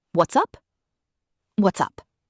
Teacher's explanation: Notice it's not what is up. It blends into what's up, almost one word.